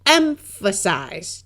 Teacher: the first syllable is said a little louder than the others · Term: accented syllable